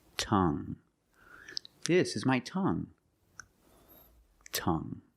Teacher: You have only the nasal sound. There's no g. It's just the sound Tongue.